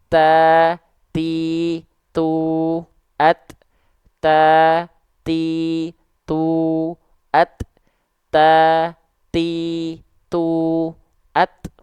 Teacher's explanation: percikan-percikan nafasnya ta ti tu at it UT hanya percikan saja karena dia punya sifat kuat sifat syiddah dari segi suara dia enggak ngalir suaranya impactnya ke nafas kita enggak ngalir tapi hanya berupa percikan · Nah nanti kita praktiikkkan berarti dia dilafalkan eh ada percikan nafasnya Jadi bukan mengalir nafas tapi hanya berupa percikan-percikan nafas saja